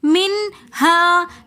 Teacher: منہا کے اندر نون ساکن اور اس کے بعد ہا رہی ہے تو ہم یہاں پر غنہ نہیں کریں گے۔ منہا، منہا کے ساتھ الف مدہ ہونے کی وجہ سے ہم یہاں پر ایک الف کی مقدار کھینچ کر پڑھیں گے منہا۔